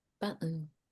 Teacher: What happens is that the T sound becomes a glottal T before a weak syllable ending with button. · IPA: ʔ